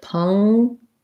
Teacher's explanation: So first syllable stress, vowel schwa sounds like pung.